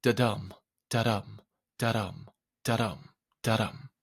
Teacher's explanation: This is the pattern known as an iamb, consisting of an unstressed syllable followed by a stressed syllable.